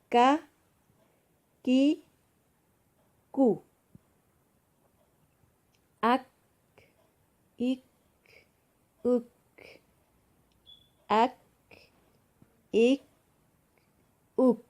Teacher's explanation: زبان کی جڑ سے تھوڑا سا اگلی منہ کی طرف اس سے کاف ادا ہوتا ہے